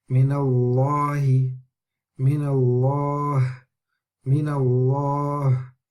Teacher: We can hear the lam is pronounced heavy. It's not like laha, that's different. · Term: lam of Allah